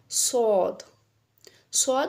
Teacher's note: सद है हमारा तरफ लिसान जुबान की नोक और ऊपर नीचे के दोनों दांत इसमें शामिल होते हैं और इसका मखर थोड़ा सीटी वाला सीटी की आवाज आएगी जैसे